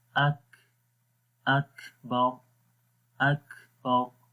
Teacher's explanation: را کو موٹا پڑھیں گے، جب رکیں گے تو را کے اوپر پیش نہیں پڑھیں گے، یہاں پر جزم آ جائے گی، ٹھیک ہے، اک باؤ، واللہ اکبر، واللہ اکبر۔